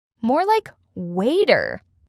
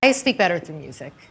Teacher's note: The T turns into a soft D sound.